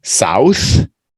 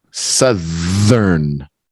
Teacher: That's the unvoiced TH. South. But the southern is the voiced.